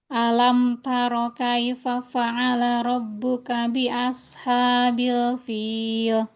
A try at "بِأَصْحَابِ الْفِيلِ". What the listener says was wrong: Di Al-Sad ya, jangan jadi sin, hati-hati.